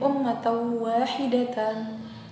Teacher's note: Tanda baca fathah tanwin bertemu dengan huruf waw ya. Ini dibaca dengung ya, karena idgham bi gunnah itu memasukkan huruf ya. Jadi dibaca dengung.